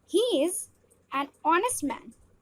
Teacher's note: We pronounce the noun honest while keeping the h silent. The main sound is of the vowel o.